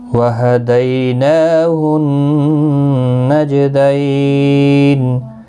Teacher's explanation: دیالین ہے، نون کو ایک الف کی مقدار کے برابر کھینچ کر پڑھیں گے، اور نون مشدد پر غنہ ہوگا، جیم ساکن پر قلقلہ ہوگا. دیالین ہے، وقف کی صورت میں نون ساکن پڑھا جائے گا، 3 سے 5 الف کی مقدار کے برابر کھینچ کر وقف کریں گے